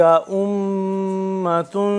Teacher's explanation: میم مشدد ہے، اور یہاں پہ ہم کریں گے غنہ